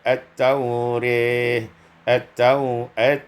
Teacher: imalatu fathatir ra, diimalakan fathah ra